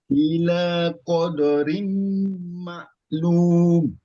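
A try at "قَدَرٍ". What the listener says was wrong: Jangan kodo. Koda.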